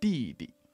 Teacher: the D in Chinese is more like the T in that of store. It's more like a poppy flick of the tongue on the gums.